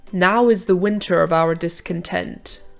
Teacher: notice how we naturally stress the now rather than the is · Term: trochaic inversion, Trochaic Inversion